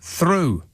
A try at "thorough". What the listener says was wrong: No. That, with the O, it's thorough.